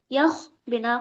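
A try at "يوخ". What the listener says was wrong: یہاں پہ پیش ہے، یہاں پہ پیش ہے یوخ.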